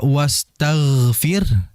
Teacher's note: Tebal hurufnya, tafkhim. Jadi aliran sudah dapat, tinggal dinaikkan pangkal lidahnya. Gunanya apa? Untuk menebalkan huruf ghain.